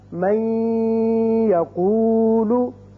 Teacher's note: ہم اس کو جب من کو یقولو کے ساتھ ملائیں گے تو ادغام کریں گے اور یہاں ایک الف کے برابر آواز ناک کے بانسے میں ٹھہرے گی